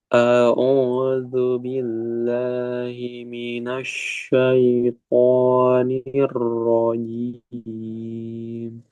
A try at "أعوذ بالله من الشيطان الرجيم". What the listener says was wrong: Tinggal nunnya ya. Mino, jangan mino. Mina, minash, minash. Lagi.